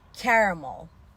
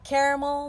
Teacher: heceleri ayırıyoruz vurgum ilk hecede vurgulu hecede a Açık a sesiyle okunur yani e ke diğer heceler vurgusuz Şiva sesiyle okuyoruz ramel ramel